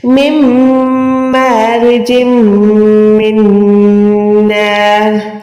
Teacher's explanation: نون یہاں پر بھی جیم دو زیر کے بعد میم ہے, یہاں پر بھی ادغام گننے والا, نون ساکن کے بعد نون ہے, یہاں پر بھی ادغام گننے والا. را دو زیر پہ ہم رک رہے ہیں, را ساکن ہو جائے گی · نون ساکن کے بعد میم ہے, اس پہ بھی ادغام ہے, یہاں پر بھی گناہ کرنا ہے